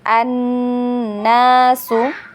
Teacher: Nah, di sini huruf nun bertasydid ya, karena nunnya bertasydid maka dia wajib gunnah. Dan tempo gunnahnya itu 2 harokat